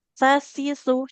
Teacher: Kalau sa ujung lidahnya ke ujung gigi seri atas.